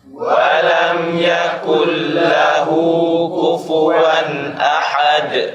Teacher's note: Nun di kalimat yakul lahu karena ada idgham hilang, tidak ada gunnah. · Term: idgham bila gunnah